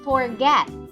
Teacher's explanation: the bottom lip is pressed very lightly into the top T air is pushed out of the mouth between the top teeth and the bottom lip this sound is to be a continuous consonant meaning that it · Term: F sound